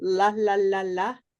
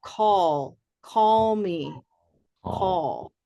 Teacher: There's light L, la, la, la, la. And there's dark L, which is at the ends of words